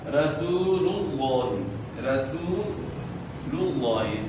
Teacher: لفظ اللہ کے نام سے پہلے پیش ہے تو اس وجہ سے وہ پیش میں ہونٹ گول ہوں گے